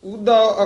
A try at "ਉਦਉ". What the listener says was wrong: ਨਹੀਂ ਨਹੀਂ ਉਧੋ ਤੇ ਦਲੈਂਕੜ ਲੱਗ ਜਾਣਗੇ ਇਹ ਤਾਂ ਔਂਕੜ ਹ ਉਹਉਦਾ ਉਹਦਾ ਉਚਾਰਨ ਕਰਨਾ ਦਲੈਂਕੜ ਨਹੀਂ ਬੋਲਣੇ ਹਨ।